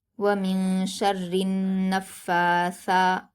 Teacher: فا پر کھڑا زبر ہے اس لیے اس کو 2 حرکات کھینچ کر پڑھیں گے۔ سا پر کھڑا زبر ہے، اسے بھی 2 حرکات کھینچ کر پڑھیں گے، اور سا کو نرمی کے ساتھ پڑھتے ہیں جیسے ذال کا مخرج ہوتا ہے۔ وَمِن شَرِّ النَّفَّاثَاتِ، آگے دیکھیے تا پر حرکت جلد پڑھیں گے۔ · فا پر تشدید ہے، فا کو سختی کے ساتھ پڑھیں گے اور پیچھے کے نون سے ملا کر پڑھیں گے۔ فا پر کھڑا زبر ہے اس لیے اس کو 2 حرکات کھینچ کر پڑھیں گے۔